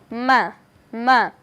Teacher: যদি উচ্চারণের স্থান দেখি তাহলে আমরা এখানে দেখতে পাচ্ছি দুই ঠোঁট তে উচ্চারণ হবে